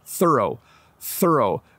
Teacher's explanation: When I say thorough, my tongue is between my teeth